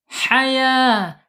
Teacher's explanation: ha ini al-hams, mengalir, gitu ya. Jadi mengalir dia napasnya.